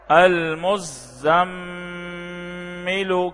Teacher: کیوں غنہ ہو رہا ہے؟ میم مشدد ہے